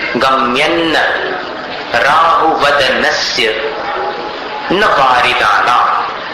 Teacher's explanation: यहाँ पर अनुस्वार का उच्चारण न के समान, अन्न के जैसा।